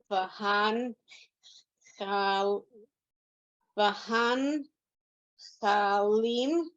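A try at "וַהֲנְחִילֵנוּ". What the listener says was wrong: No, look at the vowels. You're not doing the correct vowels. You mix the vowels up.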